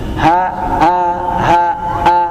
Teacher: Tapi bagian bawah A seperti H ya, seperti H. A dengan H itu satu makhraj. Bedanya yang satu ada nafasnya. · Hamzah atau alif yang berharakat itu bunyinya keluar dari aljawuf, rongga mulut. A ya a hamzahnya keluarnya dari tenggorokan bagian bawah. Rongga tenggorokan. Tapi bagian bawah A seperti H ya, seperti H. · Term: huruf hamzah